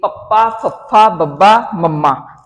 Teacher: ਹੋਂਠੀ ਧੁਨੀਆਂ ਕਿਹੜੀਆਂ ਨੇ ਹੋਂਠੀ ਧੁਨੀਆਂ ਜਿਨਾਂ ਦਾ ਉਚਾਰਨ ਕਰਨ ਸਮੇਂ ਬੁੱਲ ਜਿਹੜੇ ਆਪਸ ਚ ਜੁੜ ਕੇ ਹਵਾ ਨੂੰ ਰੋਕਦੇ ਨੇ ਤੇ ਫਿਰ ਹਵਾ ਛੱਡੀ ਜਾਂਦੀ ਆ